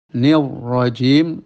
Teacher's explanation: Nir itu langsung tebal ya Eh karena ro berharakat fathah ya Nir itu mengikuti ya Jim jangan ada angin Jim jangan